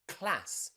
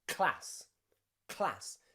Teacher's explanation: rather than saying k and l separately, we try to say them so fast that they sound like one sound.